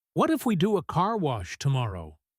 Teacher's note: The pitch goes up on car wash. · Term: rising, optimistic rhythm